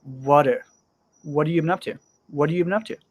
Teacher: So the have is there, but I'm not really pronouncing it strong